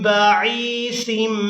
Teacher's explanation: यहाँ हमजा को याए मद्दा के साथ मिलाते हुए खींच कर अदा करेंगे।